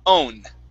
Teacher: what you want to eliminate is that vowel sound between the W and the N, okay? So all I want you to do is pronounce an O sound, O, and then an N.